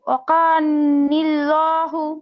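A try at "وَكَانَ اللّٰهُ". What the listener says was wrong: আপু, নুনে জবর। ওয়াকানাল্লাহু।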